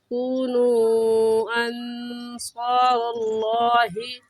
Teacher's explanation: اس مد کو مد منفصل اور مد جائز کہیں گے، اور اس مد کو 3 الف کی مقدار کھینچیں گے